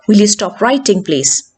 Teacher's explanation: Even a question meant as an order will have falling intonation.